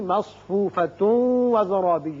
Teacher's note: یہاں تا کے اوپر دو پیش تنوین ہے، ادغام غننے کے ساتھ کریں گے، یعنی مصفوفۃ وزرابی ہوگا، لیکن وقف کریں گے تو پھر ہا ساکن ہو جائے گی۔